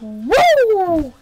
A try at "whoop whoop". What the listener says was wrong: No, whoop whoop. No, like it's whoop whoop. You're saying woo like Frick Flair, and I mean.